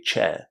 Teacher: Because my accent is British, I don't actually pronounce the letter R in an ending like this, and I say chair.